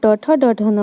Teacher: मुड़ के तालू ऊपर सटता है, इसीलिए इन्हें मूर्धन्य कहा जाता है